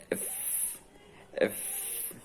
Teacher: This sound is labiodental, so you must put together upper teeth and lower lip.